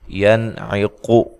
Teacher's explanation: ینعق، یہاں نون ساکن کا اظہار ہے، غنہ نہیں کریں گے، قاف کو موٹا ادا کریں گے